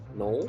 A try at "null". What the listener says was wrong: You're always saying it like Noel. No, like not. But yeah, like no. Null.